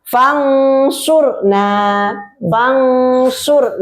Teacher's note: Jadi itu harus nun sukunnya masuk ke shad makhrajnya gitu.